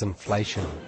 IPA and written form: ɪnˋfleʃən (inflation)